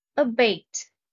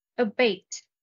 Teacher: stress is on the second syllable